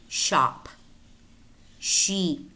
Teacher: Sh, remember, is a voiceless post-alveolar fricative,